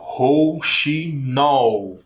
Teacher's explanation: É a última sílaba que é a mais forte. Então, é uma palavrinha oxítona, tá? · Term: sílaba tônica